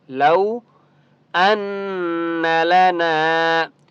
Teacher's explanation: نون کے اوپر تشدید ہے تو غنہ کرنا ہے